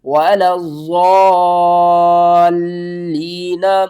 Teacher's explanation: ضاد کے اوپر دیکھیں شد ہے تو اس کو ہم نے 2 بار پڑھنا ہے سختی کے ساتھ پڑھنا ہے ولظ آگے ضاد کو ہم نے اس لام کے ساتھ بھی ملانا ہے اور ماد کے ساتھ کھینچ کر بھی پڑھنا ہے ولظال لام یا زیر لی نون زبرنا، ولا الضالین، اور جب آپ یہاں پر وقف کریں گے نون ساکن ہو جائے گی۔ · اس مد کا نام ہے مد متصل، قرآن پاک میں ہم اس کو بڑی مد بھی کہتے ہیں۔ اس کو آپ نے 5 الف کے برابر کھینچ کر پڑھنا ہے